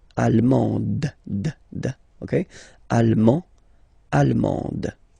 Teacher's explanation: you don't pronounce the final D, but then you pronounce it here for the feminine form